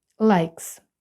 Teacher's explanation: кінці І наша ай прочитується як в алфавіт тому буде Likes S після глухої K звучить як с